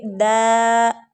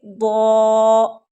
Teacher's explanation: ضاد جو ہے حروف مستعلیہ ہے، یعنی کہ پر پڑھے جانے والے حروف میں سے ایک حرف ہے، تو اس کو پر کر کے پڑھیں گے، دا نہیں پڑھیں گے، ضا، ٹھیک ہے۔